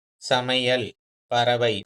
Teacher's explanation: அப்ப சொல்லின் இடையிலும், இறுதியிலும் ஐ வந்து 2 மாத்திரையிலிருந்து 1 மாத்திரை அளவே குறைந்து ஒலிக்கும் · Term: ஐகார குறுக்கம்